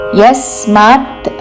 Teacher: యస్మాత్ య మీద ఆఘాత